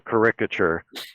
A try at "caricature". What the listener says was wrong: You mean caricature? You put the syllable in the wrong place.